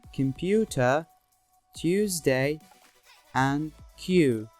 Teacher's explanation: Another important thing you should be aware of is that y after p, t, and k becomes voiceless, as in computer, Tuesday, and Q.